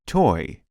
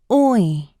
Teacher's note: The lips begin forward and rounded and move into a retracted state with the corners of the mouth pulled back, like a slight smile. The /ɔɪ/ is tense and long in duration. Tension should be felt in the jaw, lips, and tongue. · The oi, like in the word toy, is produced by rapidly moving the tongue from the back of the mouth to the forward high part of the mouth. The jaw begins lowered and partially open and moves to an almost closed position. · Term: vowel sound /ɔɪ/, vowel sound oi